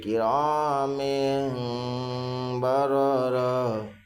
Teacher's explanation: من بین الصلب کرام بررہ، ساکن میم کے نیچے دو زیر کی تنوین ہے، دو زیر کی تنوین کے بعد با ہے، اس لیے دو زیر کی تنوین کو میم سے بدل کر گنہ اخفا کے ساتھ پڑھیں گے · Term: اقلاب